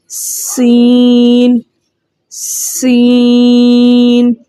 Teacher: سین بھی حروف صفیریہ میں سے ہیں، تو ہم نے اس کا صفیر برقرار رکھتے ہوئے پڑھنا ہے